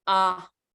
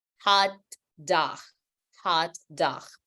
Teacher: the sound is saying O, but with your mouth wide open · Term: short sound